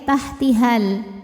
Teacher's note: Namun jika wasol madnya gugur, haknya jadi pendek ya, tahtihal. Namanya takhallus bil hadfi.